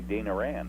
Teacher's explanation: coming from Boston, you don't pronounce the R, and where there is no R, you put it in there